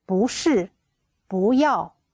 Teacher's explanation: But when it is before the fourth tone, we read 不, the second tone.